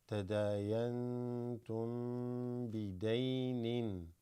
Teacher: this meme sakina followed by ba also has a bit of holding on it